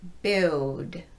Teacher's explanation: that many English language Learners get into a bad habit of using their lips instead of their tongue to make the dark l sound